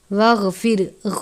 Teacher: واغفر لنا، واغفر، غین ہے، غین کو بھی ہمیشہ پر پڑھتے ہیں کیونکہ غین بھی حروف مستعلیہ میں سے ہے. واغفر، را ساکن ہے، را کو بھی پر پڑھیں گے.